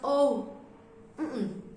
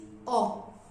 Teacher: the pronunciation is o very short and close